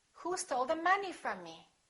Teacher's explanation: From is a preposition, so we don't stress it. It's not a content word.